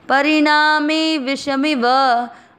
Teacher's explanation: ण और मे पर जोर दिया है और सब शब्द आराम से नॉर्मल में ही बोलना है